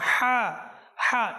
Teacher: এই হাটা আপনি সামনের দিকে উচ্চারণ করবেন আমরা অনেক সময় হাত্তা ভিতরে দিয়ে উচ্চারণ করি ভিতরে না আপনি সামনের দিক দিয়ে চেষ্টা করুন জিহ্বাকে নিজের নিজের